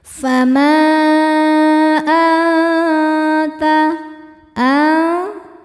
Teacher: Sedangkan hamzahnya adalah alif dengan harakat fathah pada kata kedua yaitu anta. Maka huruf mimnya panjang boleh empat boleh lima harakat. · Maka huruf mimnya panjang, boleh 4, boleh 5 harokat. · Karena nun sukun bertemu dengan huruf ta. Cara baca nun sukunnya adalah samar-samar. Siap-siap menuju makhraj ta disertai dengung. Dengungnya sedikit karena ta makhrajnya masih dekat dengan nun. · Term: ikhfa hakiki aqrab, mad jaiz munfasil, ikhfa hakiki akrab